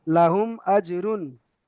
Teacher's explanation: মিম সাকিনের পরে পরে বা আর মিম ছাড়া অন্য অক্ষর এসছে, হুম, তাই এখানে বিনা গুণায় জাহির করে পড়তে হবে।